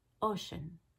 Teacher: instead of just making it a schwa or a short I, she made it somewhere between a short E and a short A.